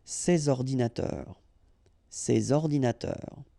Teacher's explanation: so you should make the liaison between s and o